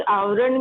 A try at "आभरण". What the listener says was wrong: आवरण नहीं है, आभरण है वो।